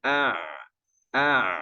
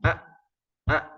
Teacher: tenggorokannya Ain itu tenggorokan tengah-tengah ya kemudian nanti di antara kekhasannya kalau Ain itu dia ya kayak molor gitu suaranya ya melar gitu A kalau sukunnya ya a a sedangkan kalau Hamzah itu enggak